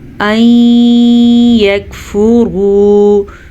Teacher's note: نون ساکن کے بعد یمون میں سے یا آیا ہوا ہے تو ہم ان دونوں کو آپس میں ملائیں گے اور غنے کے ساتھ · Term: ادغام بالغنہ